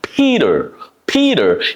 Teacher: a P is unvoiced plosive stop, and lots of air is involved to do it